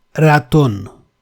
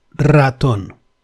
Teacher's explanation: There we have an initial R. That can never be pronounced as ratón. It has to be rolled, ratón. It takes a bit practice to master the pronunciation of the rolled R or R.